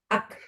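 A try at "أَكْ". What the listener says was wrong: Ya bener memang keluar ak. Tapi bukan juga jadi kuat banget jadi ak. Ak natural saja. Ak. Iya, bukan dilembutkan karena memang nanti kita ada cara pengucapannya masing-masing karena huruf kaf, huruf ta dia punya sifat yang lain. Jadi akan terpengaruh sifat yang lain. Jadi sementara ini ketika mengucapkannya keluarin dulu aja anginnya. Ak.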